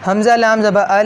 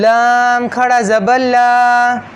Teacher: جب میں حمزہ لام زبر ال پڑھ رہا ہوں تو اسے میں باریک کر رہا ہوں، لام کو موٹا نہیں کر رہا، لیکن جب لام کے اوپر کھڑا زبر پڑھ رہا ہوں تو پھر لام کو میں موٹا کروں گا۔